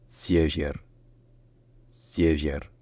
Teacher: Essayez de faire comme si ça se disait Sie, Vier, sauf que bien entendu, donc le R à la fin c'est un R roulé, et que le deuxième est peut-être en fait plus proche d'un son qui est à mi-chemin entre le I et le E. Donc c'est Sievier.